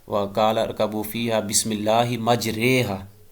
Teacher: اور اس میں امالہ کی جو قسم ہے کہ اس کو الف کو یا کی طرف نسبت دے کے پڑھیں گے، لیکن مکمل یا نہیں پڑھیں گے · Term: الف الامالہ